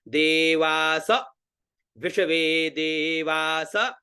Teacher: दे में नीचे वा में ऊपर सा में बीच में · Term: स्वर